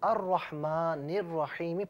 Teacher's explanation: دونوں مقامات پر الف لام موجود ہے لیکن لام کو پڑھا نہیں جا رہا. اس کی وجہ یہ ہے ناظرین کہ یہاں پر آپ دیکھیے کہ دونوں مقامات پر لام کو نہیں پڑھ رہے، دونوں مقامات پر را ہے. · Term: حروف شمسیہ